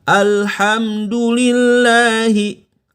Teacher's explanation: Padahal pengucapan H bukan di dada, tapi di tenggorokan, pangkal tenggorokan. Maka kurang tepat kalau mengucapkan Alhamdulillahi Rabbil Alamin.